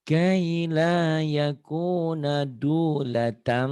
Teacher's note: Ini iklab. Kalau iklab tuh berarti dominannya bunyi M. Ada bindengnya sedikit tapi.